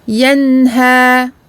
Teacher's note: Donc noun bayniya, donc un temps moyen intermédiaire entre ashidda et ar-rakhawa. Donc en français, c'est le temps intermédiaire entre le blocage du son et l'écoulement total du son.